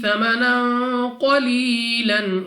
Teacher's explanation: قاف مستعلیہ میں سے ہے، موٹا پڑھیں گے منہ اور آواز کو کھول کر